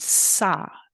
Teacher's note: made by letting air flow through a very narrow passage so that it creates a hissing sound like the s in sa